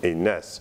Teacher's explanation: Resyllabation, on dit par exemple ensuite enaas, on prononce enais, ou bien avec insertion d'un glide enayas, ou bien contraction des voyelles comme enas. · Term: hiatus